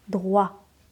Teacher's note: J'envoie un petit peu d'air, mais pas beaucoup.